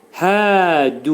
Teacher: Çünki həddən sonra əlif gəlir və hərfin məxrəci boğazımızın aşağısından olacaq. Boğazın aşağı hissəsindən çıxarılacaq. · Boğazın aşağı hissəsindən çıxarılacaq. Hədu. Dəl hərfi incə samitə qrupuna aiddir.